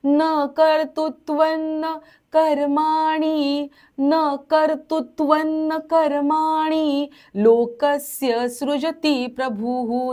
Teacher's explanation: शेवटचा जो विसर्ग आहे पूर्ण उच्चार करायचा, खुलून त्याचा उच्चार करायचा